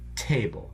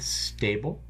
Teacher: do you feel the puff of air with the table that is not there with stable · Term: aspirated